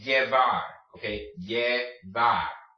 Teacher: It's going to make a Y sound, or sometimes the J sound, depending on what country you're in or what dialect of Spanish you're speaking.